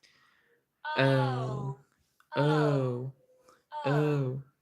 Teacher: start really relaxed, and then move to a very round position with your mouth. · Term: this O